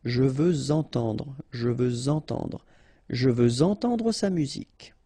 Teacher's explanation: Even if we've got this X at the end, well, with the liaison it will sound like z.